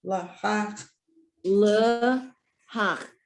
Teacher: So the second letter is a hey, the aspirate one, the breathy one. And the third one, the chet, is the guttural.